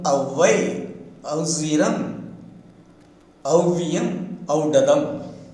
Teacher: This diphthong is produced by the combination of the two vowel phonemes a and o. Au, example, avvai, auziram, auviyam, audadam.